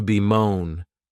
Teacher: this verb has 2 syllables, and the stress is on that second syllable